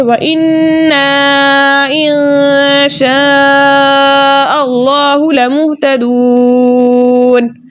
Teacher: واو مدہ کو 2 حرکت کی مقدار کھینچ کر پڑھتے ہیں، لیکن آگے نون کا سکون عارضی وقف کی صورت میں آ رہا ہے، اس لیے یہاں پر مد بنے گی مد عارض وقفی، جس کی مقدار 2 4 6 حرکت ہے، لیکن 6 حرکت کی مقدار کھینچ کر پڑھنا زیادہ بہتر ہے